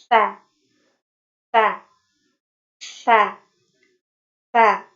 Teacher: infitah ya, terbukanya aula tengah lidah. Adanya jarak antara lidah dan langit-langit.